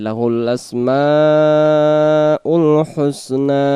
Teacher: এখানে মা চার আলিফ টান দেব, এই যে লাহুল আসমাউল হুসনা, আবার নাটা এক আলিফ টেনে আমরা দম ছেড়ে দেব।